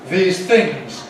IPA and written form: ˈðiːz ˈθɪŋz (these things)